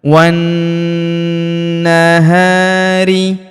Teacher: Huruf na kita tahan dan tekan serta kita dengungkan dua sampai 3 harakat karena terdapat tanda tasdid di atasnya.